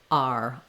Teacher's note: ending in the ER sound not too slow and not separate not ah and ER but R all one sound gliding together